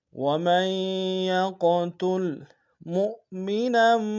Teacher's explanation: وَمَن يَقْتُلْ مُؤْمِنًا، میم کو حمزہ کے سامنے لائیں گے، یہ حمزہ بشکل واو ہے، جھٹکا دیں گے، آخر میں نون کی تنوین کو میم کے سامنے لائیں گے، شدہ زور دیں گے۔